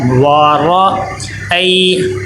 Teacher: واو پہ ہونٹ گول ہونے چاہیے، واو ہونٹوں سے ادا ہوتا ہے، وارا ای، یہاں پہ را دیکھے، را کے اوپر زبر آ گئی ہے، اس کو موٹا کر کے پڑھیں گے۔